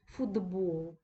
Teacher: дуже часто відбувається асиміляція звуків за дзвінкістю що це означає наступні дзвінкий звук впливає на попередній глухий і робить його дзвінким